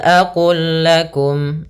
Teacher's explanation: Di sini ada namanya idgham mutamatsilain, yaitu huruf lamnya makhrajnya sama kepada huruf lam, kita masukkan langsung di huruf lamnya